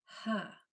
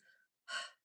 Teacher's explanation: The sound for H is voiceless. There's no vocal cords, no voice box being used. It's only air. Only blowing.